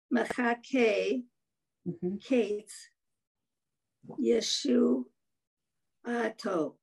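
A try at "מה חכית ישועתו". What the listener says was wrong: Nice. Perfect.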